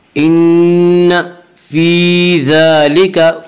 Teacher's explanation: ان فی ذالک, فی ذالک یا مدہ وہ یا جو ساکن اس سے پہلے زیر ہو, یا مدہ کو ایک الف کے برابر کھینچ کر پڑھیں گے